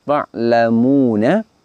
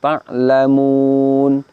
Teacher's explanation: Lafaz terakhir di situ tertulis ta'lamuna, lalu kita baca ta'lamun. Kita sukun nun fathahnya. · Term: taskin